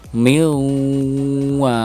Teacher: Dengung terasa di pangkal hidung ya, dengung terasa di pangkal hidung.